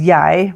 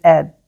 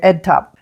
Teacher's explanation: They pronounce the word I as yai, but the word head is just ed.